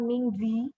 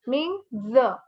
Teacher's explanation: The last I here is not pronounced. So there's no E sound or I sound.